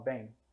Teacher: o e se tornasse um som nasal mas no português já no Galego português o m torna a vogal anterior nasal bem né no português brasileiro esse som costuma essa vogal costuma